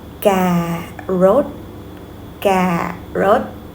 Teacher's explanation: Ga with the falling and rot with the rising.